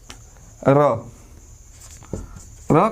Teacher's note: र को बोला जाता है लुंठित वर्ण